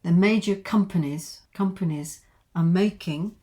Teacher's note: it's not a linking R because it's followed by a consonant. The major companies are making, I think I said are making because I'm a newsreader here, are making, and therefore it's clearer, is clearly a drop in the ocean.